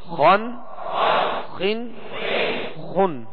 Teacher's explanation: یہ دونوں حروف حرف خا اور حرف غین یہ دونوں حروف پر یعنی موٹا پڑھیں گے ان کو، اس لیے کہ یہ حروف مستعلیہ میں سے ہیں